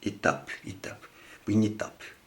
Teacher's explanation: T is a weak sound, but there's a vowel after that. So there's a linking here.